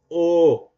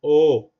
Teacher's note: Como los labios se redondean, cuando decimos O, quiere decir entonces que la vocal es labializada.